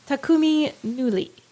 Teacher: the stress should be on the first syllable of each of those sort of words